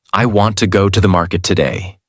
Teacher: Want, go, market are strong. Other words become lighter and faster. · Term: Natural American rhythm